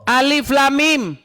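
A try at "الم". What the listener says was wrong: Alif tuh enggak panjang.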